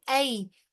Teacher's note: आई बगैर खींचे हुए तेजी से अदा करेंगे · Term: या लीन